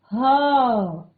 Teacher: गले से हम उच्चारित कर रहे हैं और ऊपर से क्या हो रहा है, थोड़ा सा ऊष्मा सी आ रही है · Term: ऊष्म व्यंजन